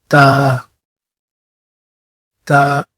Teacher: اپنی جو زبان ہے اس کو آپ اپنے دانتوں کے جو اگلے دانت ہے اس کے پیچھے رکھ کے پڑھیں